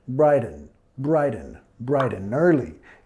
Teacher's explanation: Y vinculando de la N en and, al early